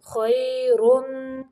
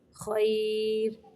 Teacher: اگر را کے اوپر دو پیشیں پڑھنی ہے تو را موٹا ہوگا، اگر را پہ رکنا ہے ساکن کرنا ہے تو پھر ہم یہاں پہ را کو باریک پڑھیں گے